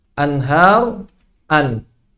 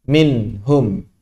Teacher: Membaca huruf dengan izhar artinya sama dengan membaca huruf hijaiyah ketika sendirian. Jadi mengucapkan anhar sama dengan ketika mengucapkan an. Nunnya itu sama, tidak berubah. Anhar, an. Minhum sama dengan min.